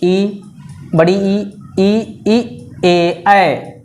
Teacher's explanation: जिह्वा का यदि अग्र भाग उठ रहा है तो अग्र स्वर